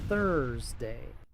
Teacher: Muchos pronuncian esta palabra Thursday, pero aquí la th se pronuncia con la lengua entre los dientes. La u es muda antes de la r.